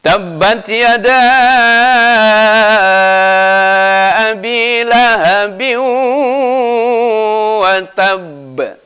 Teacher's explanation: ada tanwin ketemu dengan waw. Ya, maka itu harus didengungkan. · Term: Idgham bi gunnah